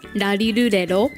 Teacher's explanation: The R sound in Japanese is really different from English. It's kind of a mix of the L sound, D sound, and R sound. And so you kind of combine them all together.